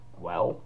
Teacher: So I'm going to swap out the symbol there to this L with the tongue behind the teeth